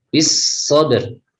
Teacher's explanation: tidak usah dialirkan karena dia tidak punya sifat rikhwah.